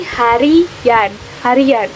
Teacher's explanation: akan muncul bunyi pelancar Y apabila sebuah kata yang berakhiran dengan bunyi i